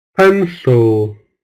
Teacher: it's stressed syllable so it's capital letter pencil second syllable with schwa sound